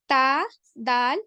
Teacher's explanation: जबान की नोक के टिप ऑफ द टंग जब सनाया औलिया की जड़ों से लग जाती है तब आपका ता, दाल और तौ अदा होता है। ठीक है, ता, दाल, देखिए जब सनाया के जो आपके जो बीच के दो दांत हैं उनके उसमें लग रहा है, उसमें मसूड़ों की जड़ों में लग रहा है। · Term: हरूफे नताहिया